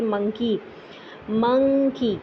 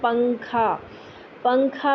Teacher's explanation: नॉन के लिए आवाज नाक में से गुजरते हैं लेकिन जबान जो है वो ताल्लू पर नहीं लगाते